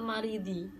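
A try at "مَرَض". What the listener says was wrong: berarti marodi bukan maridi kan enggak ada ya-nya di tengah maridi marodi sakit maribun orang yang sakit marodi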